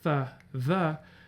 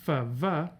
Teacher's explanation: in some varieties of English, you have dental fricatives like the, which get turned into labials, v.